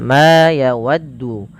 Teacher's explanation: panjangkan huruf ma sepanjang dua harakat karena ia memiliki huruf alif. Alif yang datang setelahnya. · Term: huruf mad